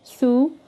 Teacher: notice the tha, my mouth is round when I'm saying it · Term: damma